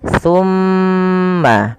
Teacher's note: Pada lafal thumma tahan dulu huruf mimnya karena di sini mim berharakat tasydid, maka tahan suara nya 2 harokat